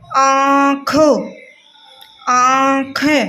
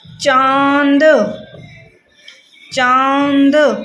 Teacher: नाक से मुंह से दोनों से इसका उच्चारण होता है, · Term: अनुनासिक